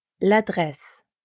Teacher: we connect la and adresse for l'adresse